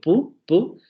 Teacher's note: tenemos un sonido sordo que no puedo alargar, al que no le puedo poner tonicidad